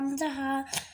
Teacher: হলকে শুরু হইতে হামজা হা